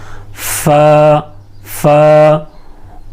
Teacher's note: ऊपर के जो दांत है उसका किनारा ये होठ की तरी वाले हिस्से पर लगेंगे